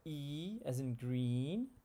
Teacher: it's a very top high, front high sound